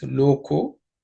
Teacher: the visarga ha becomes o because of sandhi. So the lokaha becomes loko with sandhi.